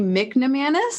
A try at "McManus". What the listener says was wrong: McManus? There is no N. It's just McManus. McManus.